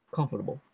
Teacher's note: R is almost silent. In this case.